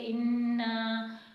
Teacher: نون مشدد ہے تو یہاں پر ہم غنہ کر کے پڑھیں گے